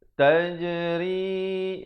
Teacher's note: Ri jangan ri itu salah. Ra di sini baris bawah dibaca nipis.